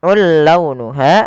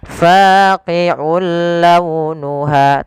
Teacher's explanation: Ada hukum tajwid berupa memasukkan suara tanwinnya kepada huruf lam yang kita kenal dengan idgham. Nah, tapi idgham di sini tidak boleh disertai dengan ghunah. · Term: idgham bila ghunah